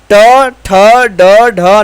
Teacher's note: मूर्धन्य से उच्चारण होने वाले ट, ठ, ड, ढ